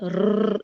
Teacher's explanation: क्योंकि रॉ मोटा है, तकरार हो रही है, तो हम जब हमजा के साथ उसको ज्वाइन करते हैं, यानी कि अलिफ के साथ ज्वाइन करते हैं, तो हम अलिफ को भी मोटा कर देते हैं।